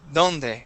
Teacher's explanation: When you say donde, your tongue touches the back of your teeth. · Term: Spanish D